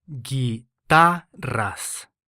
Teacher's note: This word ends in an S, so the syllable before last is stressed.